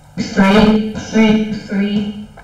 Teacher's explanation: the sound th doesn't require your vocal folds to vibrate. Your vocal folds are stationary